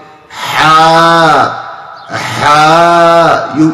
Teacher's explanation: We make after the ha a, alif, and we prolong it